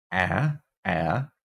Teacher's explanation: this is our low front unrounded vowel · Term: ash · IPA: [æ]